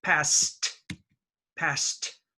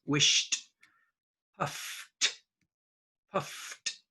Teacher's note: the ED is pronounced T after unvoiced sound